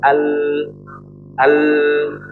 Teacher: Celahnya di bagian kanan dan kiri, ya sisi kanan sisi kiri coba al. Jadi yang mengalirkan bukan dari ujung, makhrajnya di ujung. Tapi dia nggak ngalir dari ujung, tapi ngalir dari samping. Jadi kan huruf lam dikategorikan dalam huruf yang setengah mengalir, maka harus dibaca setengah mengalir ketika kita membaca Al-Quran ya.